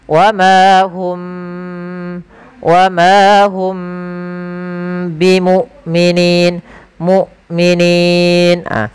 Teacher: Sedangkan syiddah tertahannya suara. Jadi ketika dia sukun itu suaranya tertahan dan suara nafasnya tertahan juga. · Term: hamzah